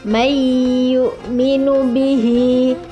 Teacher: Nun mati bertemu dengan ya, sama hukum bacaan nun mati, dibaca dengan mendengung.